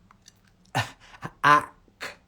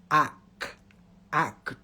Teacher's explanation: To get the k sound, it goes, the back of the tongue goes up.